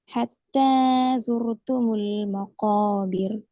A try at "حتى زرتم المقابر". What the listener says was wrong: ஜுரு துமுல் அதுலேயும் அதே பிரச்சனை. ஜுரு நீங்க ஜுரு என்று ஓய் தான் நிப்பாட்டீங்க. ஜுரு துமுல் தான் நிப்பாட்டீங்க.